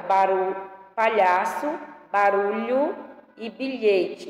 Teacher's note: a gente pronuncia como se a língua estivesse prendendo, assim, encostando um pouco no céu da boca